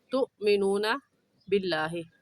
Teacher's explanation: اس آیت میں تؤمنون باللہ، تؤمنون میں حمزہ ساکن ہے اور حمزہ ساکن پر ہمیشہ جھٹکا دیتے ہیں ، تو یہاں پر تؤمنون باللہ پہ کہنا غلط ہوگا اور